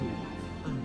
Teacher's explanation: the tip of your tongue touches your upper inner gum and makes this shape. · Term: lingual consonant